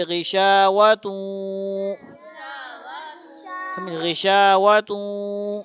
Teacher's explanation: ہم نے پڑھا غشا، تا کو واو سے ملائیں گے توں، اس کی بھی آواز آتی ہے، مکمل نہیں ادغام ہوگا، ادغام مع الغنہ ہو رہا ہے، غنہ بھی ہوگا، آدھا تا کی بھی آواز آئے گی، آدھا واو کی بھی آواز آئے گی